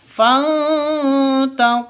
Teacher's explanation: nun mati bertemu dengan ta samar didengungkan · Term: ikhfa Hakiki, ikhfa hakiki